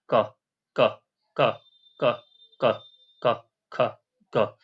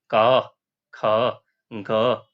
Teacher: उच्चारण करिए स्वयं से तो आपको पता चलेगा इसमें अ अपने आप उच्चारण हो रहा है।